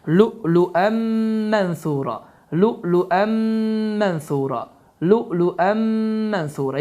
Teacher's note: Bu zaman idğam məlğun qaydası baş verir ki, n səsi itir, mim hərfi isə şəddələnir və oxunuş bu formada düzgün sayılır. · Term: idğam ma'luğunna